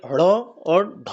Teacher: जीभ ऊपर की ओर जा रही है और तेजी से नीचे की ओर पटक रही है इसी आधार पर इसे उत्क्षिप्त व्यंजन कहा गया है ठीक है